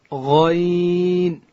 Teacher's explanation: غین ادا کیږي د ستوني په سر کې او حرف غین چې دی دا ډکول کیږي